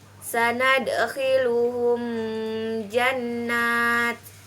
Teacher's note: mim mati bertemu dengan huruf ja, maka dibaca jelas di bibir dan mulut tertutup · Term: izhar syafawi